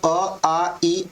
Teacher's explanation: उच्चारण में हवा केवल मुख से निकलती है, नाक से नहीं निकलती, उसे क्या बोलते हैं हम लोग, निरनुनासिक।